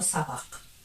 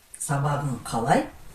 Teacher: При добавлении окончаний «х» переходит на «г»